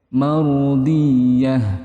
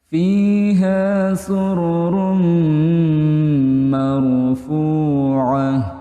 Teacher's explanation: Idgham bi gunnah didengungkan, dipanjangkan 2 harokat seperti itu.